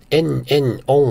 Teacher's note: 听起来也是连在一起，只是变成鼻音了